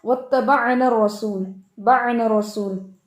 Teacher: عین کے اندر توسط ہے اور توسط جو ہے وہ سختی اور نرمی دونوں کو لیتا ہے اور اس میں آپ جلدی نہیں کر سکتے کیونکہ شدت جو ہوتی ہے وہ فوراً آواز کو روکتی ہے اور نرمی آواز کو جاری رکھتی ہے.